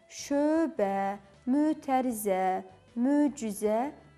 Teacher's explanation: Öz saiti bir qrup sözlərdə sözün ilk hecasında uzun tələffüz olunur.